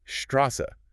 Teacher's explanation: It simply sounds like a voiceless double s like the s in kiss or miss. So just an s sound a sharp hisses a sound. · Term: sharp s, sharp S